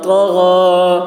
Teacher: غین حلق سے ادا کریں گے، غین کی آواز بھی موٹی ہوگی